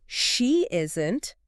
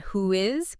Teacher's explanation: We usually insert a tiny glide sound like a Y or a W to bridge the gap smoothly. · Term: vowel to vowel linking